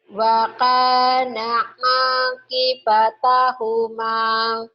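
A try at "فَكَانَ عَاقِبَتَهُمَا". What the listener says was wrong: Waka bukan wa tapi fa. Fa kana akibatahuma.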